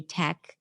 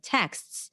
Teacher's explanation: If you drop consonants, let's say your language does not permit a lot of consonants at the end, like a sequence of consonants, so you tend to drop consonants and you may say tech instead of texts